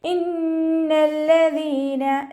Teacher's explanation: കൂടുതൽ മണിക്കുന്നതിനെയാണ് അക്മൽ ഒന്നാന്ന് പറയുന്നത്. നൂനിനും മീമിനും ശ്രദ്ധ കണ്ടാൽ നല്ലോണം മണിച്ചു കൊടുക്കുക.